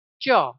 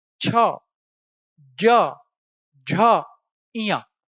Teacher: अब जब भी आप बोलेंगे च, देखो जीभ तालु को छू रही है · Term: तालव्य